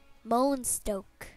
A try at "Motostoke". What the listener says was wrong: There's no N. Motostoke.